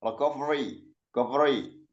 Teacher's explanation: kalau huruf R orang Barat itu kan enggak ada getaran ya.